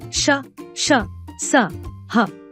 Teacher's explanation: 3 ऊष्म व्यंजन, sibilant consonants. कुछ व्यंजनों के उच्चारण में हवा तेज गति से मुंह के भागों से रगड़ खाती हुई बाहर निकलती है, जिससे गर्मी पैदा होती है।